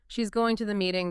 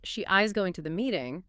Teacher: But if I say, she is going to the meeting, maybe in response to someone suggesting she isn't, that heavy stress on is completely changes the force. It becomes an affirmation, a contradiction, a statement of certainty.